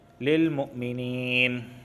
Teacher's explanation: یا ساکن سے پہلے زیر آیا ہے، اس وجہ سے میں نے اسے کھینچ کے پڑھا ہے مدہ ہونے کی وجہ سے۔